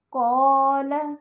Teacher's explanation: اس میں قاف کے اوپر زبر ہے لیکن پھر بھی اس میں قلقلہ پایا جاتا ہے، قال۔ تو آپ خود محسوس کریں کہ قلقلہ ایک لازمی صفت ہے جو کہ ان 5 حروف میں ہر وقت ہوتی ہے، لیکن ان کے مرتبے، ان کی شدت میں، ان کی ایکسٹریم میں فرق ہوتا ہے۔